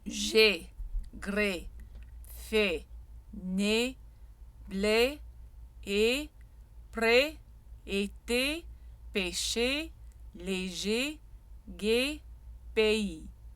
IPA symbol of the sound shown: e